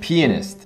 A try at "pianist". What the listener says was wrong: It's pronounced pianist. Well, pianist sounds like you're saying penis.